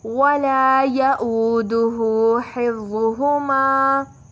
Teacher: ہا وسط حلق سے ادا ہوگا، وا موٹا پڑھا جائے گا اور یہاں پر ہما، یہاں الف مدی کا قاعدہ ہے، 2 کا مد دے کر پڑھیں گے.